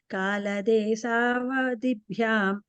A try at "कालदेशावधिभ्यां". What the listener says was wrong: Kala desha. Sha sound there.